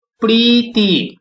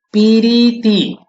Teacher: এখানে আরেকটা হ্রস্বইকার নিয়ে এসেছি, অর্থাৎ মাঝখানে একটা হ্রস্বইকার এসে গেছে